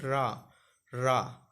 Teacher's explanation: आप बोलेंगे तो आपकी जीभ थोड़ी सी लुढ़केगी, तो इसलिए उसको लुंठित बोला जाता है